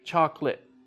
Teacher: we don't use all of the syllables with chocolate